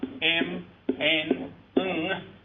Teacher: vocal track is coupled acoustically with the nasal cavity and sounds radiated from nostrils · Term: nasal sounds